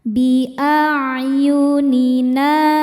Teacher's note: hukumnya mad tabi'i dhahiri sebab ada alif sebelumnya baris fathah. Dibacanya panjang 2 harokat.